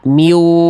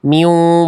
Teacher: Jadi suaranya harus dileburkan tapi masuk hidung. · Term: dengung